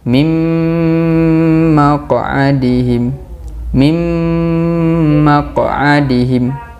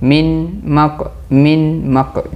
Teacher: Nun sakin bertemu dengan mim. Idgham ma'agunnah.